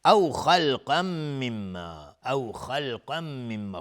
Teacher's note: خا از حروف استعلاء غلیظ تلفظ میشه و قاف هم از حروف استعلاء غلیظ تلفظ میشه. تنوین بعدش میم ادغام با غنه، مما میم مشدد دو حرکت غنه میدیم.